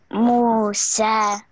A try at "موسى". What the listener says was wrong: Make it long. Sa. Musa.